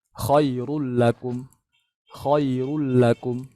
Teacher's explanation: Contoh misalkan dzalikum khairul lakum. Nah, kalau kita baca biasa kan dibaca tebal ya. Karena ro-nya dhamma kan.